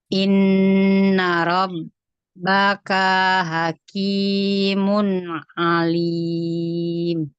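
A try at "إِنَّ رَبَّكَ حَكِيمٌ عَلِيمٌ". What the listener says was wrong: Ulang lagi. Kafnya masih kepanjangan. Kafnya kepanjangan. Janji ya, baknya mulai sekarang nggak boleh bibir dilipat-lipat. dilipat-lipat itu kayak mau benerin lipstick. Kita lagi nggak benerin lipstick di sini.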